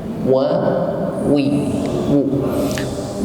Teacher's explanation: Huruf waw makhrajnya bibir atas bawah dihimpun ke depan.